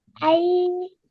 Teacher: You made it long for 2 counts, you joined on correctly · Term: Yalin